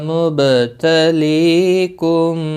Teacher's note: زبر بھی ہے، ایک الف کے برابر کھینچ کر پڑھیں گے، با ساکن پر قلقلہ ہوگا ، لی یا مدہ ہے، میم ساکن کے بعد متحرک با